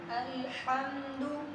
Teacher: الحمد دال پر پیش ہے اور پیش کو ادا کرتے ہوئے ہونٹوں کو گول کرنا ہے